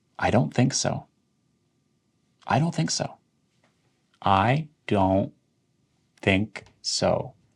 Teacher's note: The T really isn't pronounced as a hard T.